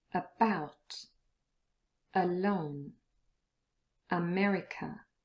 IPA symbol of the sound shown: ə